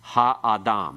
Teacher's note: Because we have 3 syllables, all with long vowels, then it's ha-adam. The ah part has no accent. The ha has a secondary accent. The major accent still at the end.